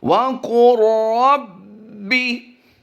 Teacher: वाव अलग लफ्ज़ होता है और कुल अलग होता है और रब भी अलग होता है, लेकिन यहाँ तीनों ही को हम मिलाकर पढ़ेंगे